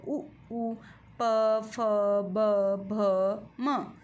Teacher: उपधमान्वीय अर्थात उ और प वर्ग कहाँ से उच्चारित होता है, ओष्ठ से उच्चारित होता है